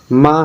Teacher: माँ है जो है ओष्ठ और क्या कह रहा है सगोष